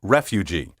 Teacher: also acceptable is refugee with the accent on the first syllable